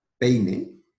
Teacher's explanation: misma sílaba ejemplos por tendríamos peine que será PE e y tenemos la vocal abierta e y la vocal cerrada I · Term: diptongo